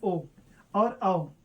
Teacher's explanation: ये कंठ, ये ओष्ठ, यानी दोनों के मेल से क्या बनते हैं? दोनों के मेल से बनता है ओ और औ। तो इनका हो जाता है कंठ ओष्ठ। कंठ, कंठ ओष्ठ, कंठोष्ठ है भी कह देते हैं, कंठोष्ठ एक ही बात है, कंठोष्ठ है।